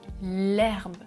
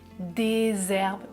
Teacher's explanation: C'est un H muet. Je dis l'herbe et au pluriel des herbes. Je fais la liaison.